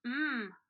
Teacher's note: the sound um for m is continuous